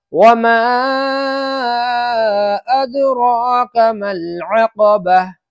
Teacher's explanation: میم کے اوپر مد ہے، اس کو زیادہ کھینچنا ہے۔